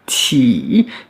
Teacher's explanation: le I, comme un I en français, avec un troisième ton, on double la voyelle.